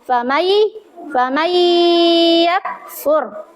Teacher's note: idgham bi gunna dibaca berdengun